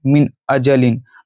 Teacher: حروف حلقی میں سے حمزہ ہے، اس لیے ناک سے آواز یعنی غنہ یہاں پہ نہیں کریں گے. تو ڈائریکٹ پڑھیں گے من اجلن.